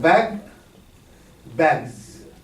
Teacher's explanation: It's not an S here, also voicing assimilation. The S becomes a Z, voice after voice.